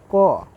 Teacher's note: हवा निकलता है और वहीं से इसका उच्चारण होता है तो क का उच्चारण स्थान कंठ है